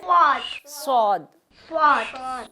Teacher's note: जो सौद है उसका थोड़ा भारी है, मुंह भर के उसको निकालेंगे